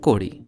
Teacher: Telugu being the most shy in using retroflexes calls it kodi